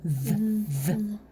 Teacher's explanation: I hear a tongue between my teeth sound right at the beginning.